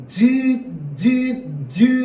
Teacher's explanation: 공기가 나오는 흐름을 막았다가 틈을 조금 열어서 공기를 마찰시키면서내는 소리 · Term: 파차름